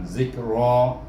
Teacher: Kemudian dimati dengan kaf, zik. Kemudian ra baris di atas bunyi ra, baca ra dengan tebal, zikra. Kemudian kaf baris di atas bunyi ka, zikraka.